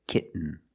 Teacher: You do the stop T, kit. You don't release, and then you fall to an N, kitten. When you make the stop T, the tongue is up, almost in the N position, so you don't have to change much. · When you have T-E-N, T-O-N, or T-A-I-N at the end of the word, and the syllable is not stressed, the T makes a different sound. We have to make a stop T and link it to the N.